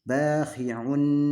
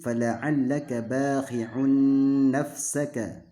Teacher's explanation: Maka dibaca nun tasdidnya adalah dengan digunahkan dan tanwinnya seolah-olah hilang. Jadi langsung masuk ke nun. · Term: gunnah musyaddadah